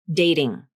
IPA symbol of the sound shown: ɾ